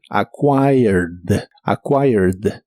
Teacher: en el pasado es acquired es un verbo regular Así que termina con e d en el pasado pero solo se pronuncia la d